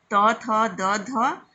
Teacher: बोलने के लिए हम दांत का सहारा लेते हैं